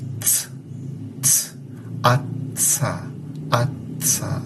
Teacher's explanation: si pronuncias esos sonidos lentamente, vas a notar que es un oclusivo seguido por un fricativo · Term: africado